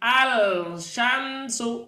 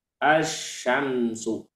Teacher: bintangnya itu tidak dibaca langsung kepada syinnya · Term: alif lam syamsiyah, lam syamsiah